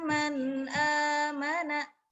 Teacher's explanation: Jadi izhar dia tidak boleh dilamakan. Dia jelas dan cepat.